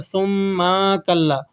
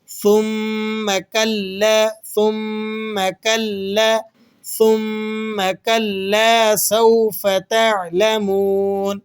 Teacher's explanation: ثم، تو اس میم کو کھینچنا نہیں، ہرگز نہیں کھینچنا، اس کے پڑھنے میں غلطی کیا کر دی جاتی ہے کہ اسے کھینچ کر ثم کلا، ثم کا میم کو کھینچ دیا جاتا ہے، تو میم کو کھینچ کر پڑھنے سے بچانا ہے، بالکل بھی نہ کھینچیں، اسے بغیر کھینچے پڑھنا ہے